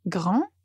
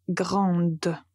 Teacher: comme on a ajouté e à la fin on va prononcer la lettre D